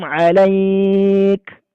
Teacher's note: Huruf kafnya terdengar hamsnya alaik.